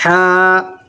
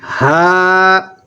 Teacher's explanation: مخرج الگ الگ ہے۔ حلق کے پچھلے حصے سے ہا، حلق کے شروع حصے سے ہا